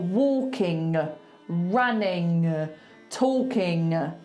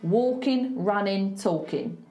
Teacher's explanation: I want it to end with an N, not a G.